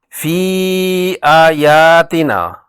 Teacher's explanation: فی آیاتنا، فی سے یائے مدہ کے بعد کھڑی زبر والی حمزہ سے مد منفصل ہے۔ فی کی یا کو 4 حرکات لمبا کریں گے